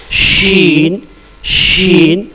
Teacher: शीन, इसका तलफ्फुज़ है बीच जुबान, यानी जुबान का जो बीच का हिस्सा है जस्ट उसके ऊपर तालु में सटाएंगे, टच करेंगे तो शीन निकलेगा, जिसमें सीटी की आवाज होगी।